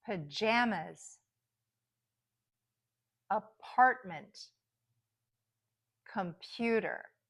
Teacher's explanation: those unstressed syllables are going to be reduced, and then you're going to really hear that vowel sound in the middle. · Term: stress is in the middle